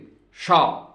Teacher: इसमें जो सकार है वो तालव्य नहीं है, वो दंत्य सकार है। तालव्य सकार जो तलुए से शा ऐसे बोला जाता है